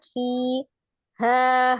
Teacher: Matobi'iyah di situ ada ya sukun sebelumnya kasro di huruf fa, fi-nya dibaca 2 harakat, fi, ha, hanya juga dibaca 2 harakat ya, ha.